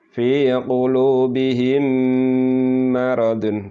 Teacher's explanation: Jadi mendengung sekitar yaitu satu alif atau dua harokat. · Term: idgham mimi